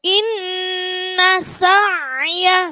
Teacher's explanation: di situ ada nun tasydid maka gunnah dibaca mendengung